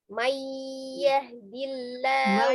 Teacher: nun sukun ketemu dengan ya tuh ditahan. Itu kan biar Mayyahdillah.